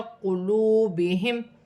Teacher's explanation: واو ساکن سے پہلے پیش ہے تو واو مدہ بن رہی ہے، ایک الف کی مقدار کھینچ کر پڑھا جائے گا